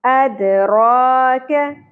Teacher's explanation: کیف باریک ہوگا، زبر کو زیادہ نہیں کھینچیں گے